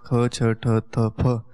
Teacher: जो 5 वर्गों के दूसरे वर्ण अर्थात ख छ ठ थ फ है, वे सकार के समान महाप्राण प्रयत्न से बोलने चाहिए